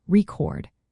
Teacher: when it is a verb, we put the emphasis on the second part